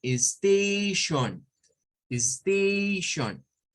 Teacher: O sea, en la segunda sílaba hay un schwa. La primera, de hecho, es la sílaba stress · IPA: /ə/